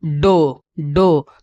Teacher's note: जीभ जो है कि ऊपर वाला दांत के पीछे जो है कि सट रहा है यानी कि मूर्धा में सट रहा है